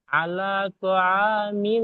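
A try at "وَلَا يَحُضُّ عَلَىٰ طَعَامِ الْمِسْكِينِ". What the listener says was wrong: ওয়ালা, আলা নয় ভাই, ওয়ালা।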